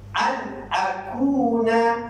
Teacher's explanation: Dia jadi izhar. Bacaan dia zahirkan bunyi nun, zahirkan bunyi mim, dan kita kena baca secara jelas. Dia tak boleh dengung.